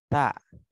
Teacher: Kalau ta itu sedikit ada keluar angin.